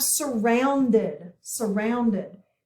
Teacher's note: we have a short u sound and we have an ou combination here actually a diphthong so we're going to put a arc under the ou okay